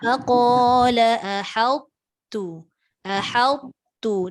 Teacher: Dia tak muncung. Tapi tebal ta tu disebabkan diangkat pangkal lidah.